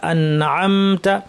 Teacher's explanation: আনআমতা এরকম শোনা যায়, আনা আনা আনা এরকম না, আন আন, জিব্বা যেন ধাক্কা খেয়ে সরে না আসে, সরাসরি আইনে চলে যাব, আন শেষ করে আতে চলে যাব। আন আম, মিম বলার সময় ঠোঁট যেন ধাক্কা না খায়।